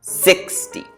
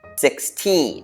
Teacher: for the first one 60 we say the first part a little stronger · for the second one 16 we say the second part a little harder or a little stronger